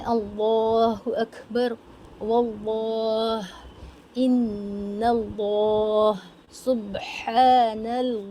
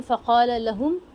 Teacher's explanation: अब ख्याल रखना है कि ल अल्लाह के लाम को मोटा ही पढ़ना है